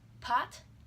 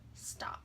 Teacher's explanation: The P is aspirated in the first, but not the second. If you try and cut up the sound waves and turn the P in pot and the P in stop, it comes out stop.